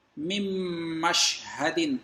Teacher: میم، نون، میم، یہ آپس میں مل رہے ہیں جس سے کہ ادغام ہوا، اور ادغام بھی غننے والا ہے